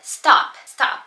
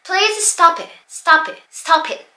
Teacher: P▁の音ね、ほぼ言ってないんですよね、これ。